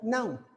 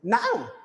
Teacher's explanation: बहुत ज्यादा टोन मेरी राइज नहीं हो रही है नाउ पे, नॉर्मली एक बहुत ज्यादा एम्फेसाइज भी नहीं कर रहा हूँ, दैट मीन्स के ये नाउ यानी एक फुल स्टैटिक इन्फॉर्मेशन दे रहा हूँ, हाँ अभी यहाँ पे फॉलिंग इंटोनेशन है।